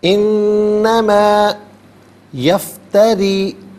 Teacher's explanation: یفتری میں را کے نیچے زیر ہے، را کو باریک کر کے پڑھا جائے گا